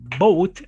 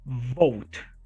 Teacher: The next one says boat, right? The first one is a bilabial sound. Yeah, we have commented about it. But the next one is vote. It's a labiodental sound.